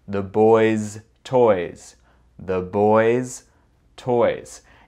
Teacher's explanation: on ne prononce pas un autre S ou son Z, on dirait the boys' toys.